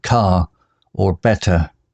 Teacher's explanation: British speakers didn't always pronounce the R sound at the end of words like car or better